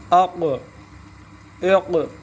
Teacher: جو قاف حروف قلقلہ میں سے ہے تو اس میں قلقلہ کرنا ہے ساکن ہونے کی صورت میں